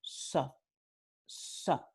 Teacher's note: esta S en particular se llama ápico alveolar porque se pronuncia usando el ápice de la lengua que toca los alvéolos. ¿Ok? Entonces, para pronunciar este sonido, los hablantes nativos del norte y centro de España usan ápice de la lengua y tocan los alvéolos y es la pronunciación de este fonema con su alófono correspondiente. · It sounds a little bit more whistled than what you know as the regular S.